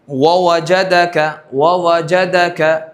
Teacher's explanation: تری مل کر با، خشکی مل کر میم، اور دونوں ہونٹ مل کر بیچ کا حصہ کھلا رہ کر واو غیر مدہ